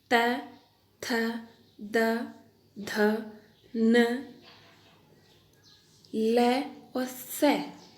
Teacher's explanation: इनका उच्चारण करने में हमारी जिह्वा दांतों को स्पर्श करती है, इसलिए इनको दंते वर्ण कहा गया है।